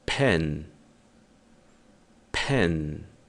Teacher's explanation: é um som que nós chamamos de explodido, ou seja, há uma explosão de ar quando pronunciamos esse P. Toda vez que o P for inicial dessa forma, nós temos essa explosão de ar ao pronunciá-lo.